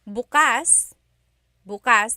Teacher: emphasis is on the first syllable, that means tomorrow